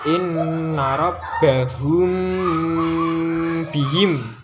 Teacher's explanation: Jadi ketika ada mim sukun bertemu dengan huruf ba, maka namanya ikhfa syafawi. Nah, ikhfa syafawi ini cara membacanya itu harus dengung.